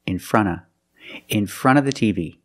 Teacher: You don't hear in front of the TV, you hear in fronta, in fronta, in front of the TV. The NT in front is between vowels, so you don't really hear the T.